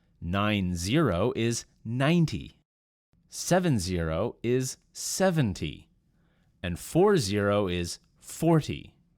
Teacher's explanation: with the first numbers the stress fell on the first syllable